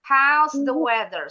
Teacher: Jadi bacanya bukan house the weather, tapi house-nya tinggi ya. House-nya tinggi supaya belakangnya bisa turun. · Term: Falling intonation